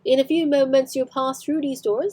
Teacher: You can hear the rhotic R at the end of the word doors